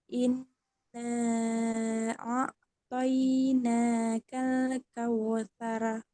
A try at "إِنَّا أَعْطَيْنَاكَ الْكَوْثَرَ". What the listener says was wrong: Dengung ya. Nun bertasdid, dengungnya coba dipanjangkan lagi ya. Inna a'tainakal kautsar. Inna, tahan lagi. Inna, an, ya ini ditahan, agak panjang.